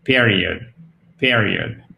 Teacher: Déjà, c'est pas période parce qu'on a un accent tonique ici. Donc, on accentue sur cette première syllabe. Et le E se prononce comme un I court. Et en fait, la petite chose à savoir qui fait toute la différence, c'est que ce I court, il se prononce presque comme un E.